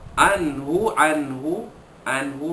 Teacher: Radhiyallahu, bukan radhiyallahu, tak betul Sebab yang betulnya radhiyallahu anhum, nun mati jumpa ha, izhar halqi, menyatakan bunyi nun mati bertemu dengan huruf ha tanpa dengung